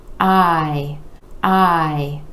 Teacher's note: we have the I vowel sound where that jaw is dropping down and coming back up